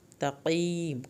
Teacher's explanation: سین کو سیٹی کے آواز کے ساتھ پڑھنا ہے. تقیم، قاف کو موٹا کر کے پڑھنا ہے، یا ساکن کی وجہ سے کھینچیں گے، آخر میں میم کو ہلانا نہیں ہے.